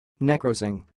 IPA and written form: nəˈkroʊsɪŋ (necrosing)